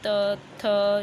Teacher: जीभ हमारी दांतों के बीच में थोड़ी सी आकर अटक जाते हैं